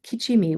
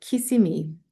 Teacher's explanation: So, lenition of ch to s um in that um second syllable position.